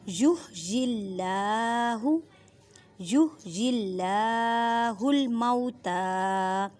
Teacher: اللہ کے لفظ سے پہلے زیر ہے تو اللہ کے لفظ کو باریک پڑھنا ہے۔